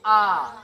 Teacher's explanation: दीर्घ स्वर जिसके उच्चारण में 2 मात्रा का समय लगता है